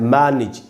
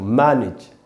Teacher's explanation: सही उच्चारण है मैनेज, ई का साउंड लगाना हमको